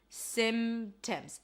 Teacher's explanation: So when there are a chunk of consonants, a consonant cluster, where there is a sequence of consonants, and then in the middle there is a stop sound like a P, in this case, you can drop it.